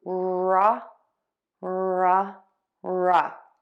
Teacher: That's a schwa there, the unstressed sound. Start with that r, tip of the tongue down, or flipped back of the tongue pulled high up.